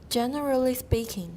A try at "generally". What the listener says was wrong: Generally, not generally, we need to leave out a schwa there. Generally speaking. long. Generally.